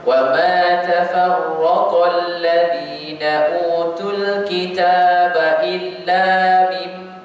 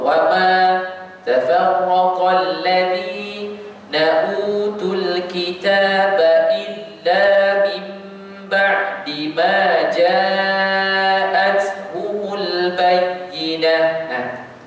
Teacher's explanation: Yang kedua illa, kita kena baca dua harakat sahaja. Sebab apa? Kalau kita baca tiga harakat dia jadi lain.